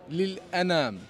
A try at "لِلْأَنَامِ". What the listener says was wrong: Before you said something else, لِلْأَنَا. He said لِلْأَنَان. But it's لِلْأَنَام with the meme and not with the noon.